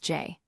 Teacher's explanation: Make sure your vocal cords engage as you release the closure. You should feel vibration in your throat. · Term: J sound